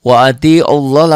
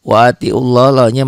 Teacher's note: lafad Allahnya dibaca tebal tafhim Kenapa tafhim karena sebelum laf Allah baris di atas waatiullahya mad